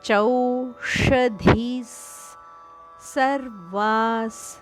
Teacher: ಧಿಯ ನಂತರ ಬರುವ ವಿಸರ್ಗ ಅದು ಸ ದಂತೆ ಉಚ್ಚಾರಣೆ